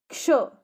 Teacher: क्ष में क आधा सुनाई दे रहा है और श पूरा सुनाई दे रहा है। क्ष। अच्छा, अब क में हमें अ सुनाई नहीं दे रहा है इसलिए वो आधा है। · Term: संयुक्त व्यंजन